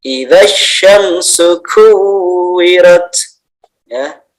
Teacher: Idza sya tebal, sa tipis.